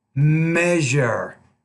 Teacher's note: It's kind of like a j and a z coming together to form this palatal consonant.